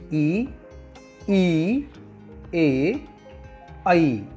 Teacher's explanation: प्रयत्न के आधार पर पहला भेद है अगर स्वर। जिन स्वरों के उच्चारण में जीभ का अगला भाग ऊपर उठता है उन्हें अगर स्वर कहते हैं।